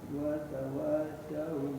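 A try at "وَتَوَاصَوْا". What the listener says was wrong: Nah, itu masih kena pengucapan sa. Nah, hati-hati ya. Bukan watawasa. So.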